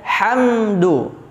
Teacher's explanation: Hamdu, tidak boleh terlalu lama ya, jangan didengungkan, tetapi dibaca jelas. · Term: izhar syafawi